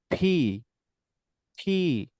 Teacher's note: এটা পি হবে না, এটা হবে হচ্ছে ফি ফি, অর্থাৎ তোমার উপরের ঠোঁট এবং হচ্ছে নিচের ঠোঁট, দুটো ঠোঁট একদম চাপ দিয়ে ভিতরের দিকে নিয়ে যাবা এবং হচ্ছে ভিতর থেকে হালকা ধাক্কা দিবা, দেখবা যে একটা অতিরিক্ত বাতাস বের হবে। তো যখন অতিরিক্ত বাতাস বের হবে তখন মনে করবা যে সঠিক সাউন্ড হয়েছে, অর্থাৎ ফি ফি, নট P ফি ফি ফি P.